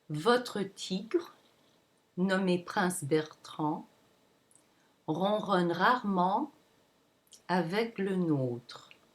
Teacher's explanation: the final syllable, it drops down significantly to show that it's the end of the sentence.